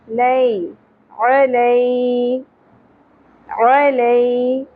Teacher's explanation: یا ساکن سے پہلے زبر ہے تو پھر یا حرف لین ہے، نرمی سے ادا ہوگا. لے نہیں پڑھنا، لئی علی علی.